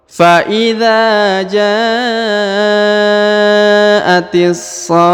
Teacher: Lalu huruf ta marbutoh yang ini, huruf ta disukunkan atau dimatikan sehingga dia berubah menjadi huruf ha ya, huruf ha sukun.